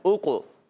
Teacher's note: ہے، ٹھیک۔ اوقسمو میں حمزہ کو قاف سے ملانا ہے، اوقو تو قاف میں قلقلہ ہوگا، آواز لوٹ کر آئے گی